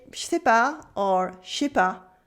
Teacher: in everyday speak, French people usually say je sais pas or je sais pas, just 2 syllables